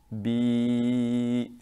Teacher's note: the ya sakin with a kasra before it, its articulation point is al-jawf